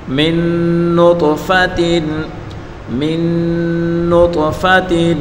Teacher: نون ساکن کے بعد نون ہے یعنی یرملون کا حرف ہے تو یہاں ہم گنہ کے ساتھ پڑھیں گے، ادغام کا قانون ہے یہاں. · طا حروف قلقلہ میں ہے، یعنی اس کو ادا کرتے وقت اس کی مخرج کو تھوڑا ہلا کر پڑھیں گے اس حرف کو. اور فا کے اوپر پڑھی حرکت ہے، بغیر کھینچے پڑھیں گے، اور تا کے نیچے دو زیر کی تنوین ہے.